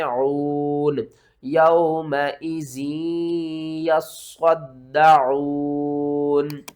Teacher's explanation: یومئذ یصدعون، کیونکہ وقف کی صورت میں نون کے اوپر جو زبر ہے اس کو آپ نے ساکن کرنا ہے